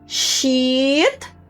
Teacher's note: é um she de ela, mais prolongado, sheet, e mesmo assim sai a palavrinha shit.